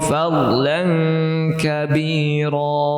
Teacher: Nah, ini untuk dot sukun. Dot ya, dot itu makhrajnya ada di tepi lidah, di tepi bagian samping lidah kita. Ini huruf dhad muncul dari sana, bukan dari depan ya.